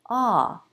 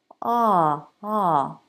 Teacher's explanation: there's a bit of tension in my tongue it isn't totally relaxed there's a little work happening in the back of my tongue